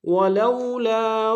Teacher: ولو میں واولین ہے بغیر کھینچے پڑیں گے، لام الف مدہ ایک اسم میں کھینچیں گے